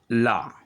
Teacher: जिन व्यंजनों के उच्चारण में जीभ तालु से छुए किंतु पार्श्व से यानी बगल से, बराबर से हवा निकल जाए, वे पार्श्विक व्यंजन कहे जाते हैं।